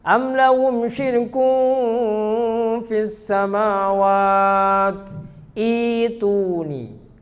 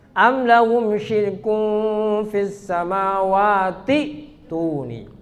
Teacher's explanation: Kalau waqaf di samawat maka hamzanya i'tuni diganti dengan ya. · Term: badal